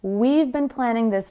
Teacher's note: It's just a tiny v sound at the end of the we.